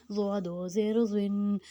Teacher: سیٹی دیں گے تو وہ زا کی آواز نکالے گا، اس لیے اس میں سیٹی نہیں دینی اور اس کو موٹا پڑھنا ہے